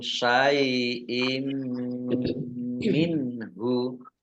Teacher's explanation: Idgham masuk bi dengan gunnah mendengung, masuk dengan mendengung. Maksudnya kasroh tanwin tidak dibaca tapi langsung masuk ke huruf mim dan mendengung mim. Ditandai mimnya ada tasdidnya. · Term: idgham bi gunnah